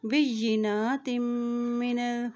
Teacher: जब भी मीम के ऊपर शद आ जाती है वहाँ पर गुन्ना भी अदा किया जाता है।